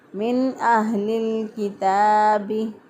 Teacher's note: ता बारीक होगा, एक अलिफ के बराबर लंबा करके पढ़ेंगे